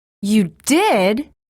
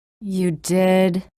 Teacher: wavering intonation the pitch changes within words